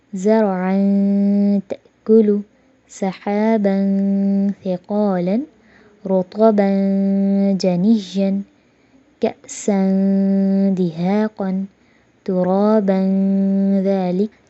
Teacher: جو تنوین کے اینڈ میں نون کی آواز آ رہی تھی اس کو ہم نے چھپایا بھی اور غنہ بھی کیا